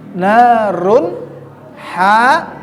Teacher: tidaknya adalah huruf han-nya setelah tanwin baik fathatain atau kasratain domatain berhadapan dengan huruf ha maka bacaannya menjadi jelas tidak berdengung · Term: izhar